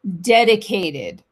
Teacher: Vous l'avez compris, j'imagine, mais je précise toujours. Alors, le T, quand il est entre deux voyelles, vous savez que le pauvre, il est un peu compressé. Du coup, il se transforme presque en de, ce qui nous donne dedicate, presque did à la fin.